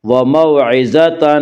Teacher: ضا کو پر پڑھیں گے، ضا حروف مستعلیہ میں سے ہے